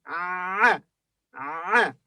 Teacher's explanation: It's similar to the English a, but from the back of the throat.